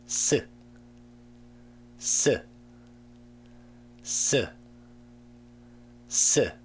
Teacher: s sound requires a little more force from the whole mouth, not just the tongue, because you have to push the air out harder.